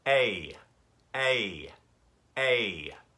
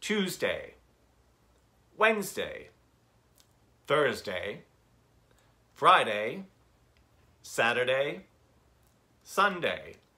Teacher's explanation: that A diphthong, which goes eh with the back of the tongue and the soft palate lifted